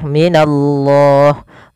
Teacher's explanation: Kemudian pada lafal minallah, pada lafal Allah di sini ada namanya hukum berupa lam tafkhim, lam yang dibaca dengan tebal